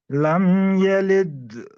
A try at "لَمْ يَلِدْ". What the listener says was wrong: لد آپ لمبا کر رہے ہیں, آپ قلقلہ جو ہے کافی زیادہ بڑا کر رہے ہیں, حالانکہ نارمل قلقلہ ہے, ساکن ہے.